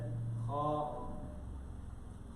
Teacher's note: This should come out from exact the beginning of the throat.